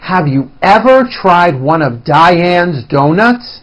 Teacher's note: Listen to my intonation and notice how I slowly step up and then I work my way down again